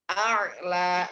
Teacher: hamzah harokatnya makhrajnya di tenggorokan bawah, kemudian naik ke atas huruf ain. A'la, seperti itu.